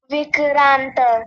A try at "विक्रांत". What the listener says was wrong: नहीं विक्रांत क आधा होता है इसमें देखिए ऐसे वे और क आधा र पूरा होता है